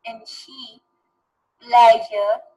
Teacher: tip of the tongue आपकी जब alveolar ridge को लगती है तो उसको प्लेटो एल्वियोलर कहते हैं